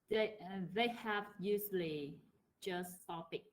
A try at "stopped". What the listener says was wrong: Stopped. Stop, not stop it. Stopped. Although there are some words that you have to pronounce the ed, but this is one of those words that you don't say the ed.